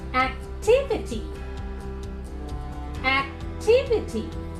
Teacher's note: here the third syllable from the right will be told more strongly or is stressed